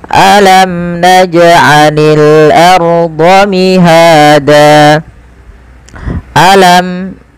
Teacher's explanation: jelaskan mimnya karena dia izhar syafawi